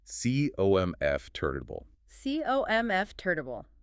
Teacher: hit the first syllable hard and be lazy with the rest.